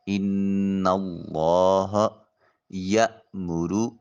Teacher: نون مشدد ہے، غنہ واجب ہوگا۔ اللہ اس میں جلالت سے پہلے نون کے اوپر زبر ہے، اس میں جلالت کے لام کو موٹا اور پر کر کے ادا کیا جائے گا۔